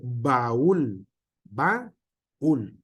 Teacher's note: hay un acento que nos rompe, como en el caso de baúl, baúl, dos sílabas diferentes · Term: hiato acentual